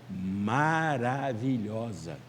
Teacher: é um acento de intensidade né de insistência isso aí não é acentuação tônica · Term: acento de insistência